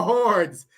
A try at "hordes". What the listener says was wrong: You might want to enunciate that last part a little bit more. Hordes. No, you say hordes.